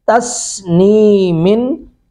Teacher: سین پر سیٹی کی آواز آئے گی